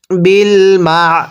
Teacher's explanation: আইনটা উচ্চারণের সময় গলার মাঝখানে চাপ দিয়ে পড়তে হবে।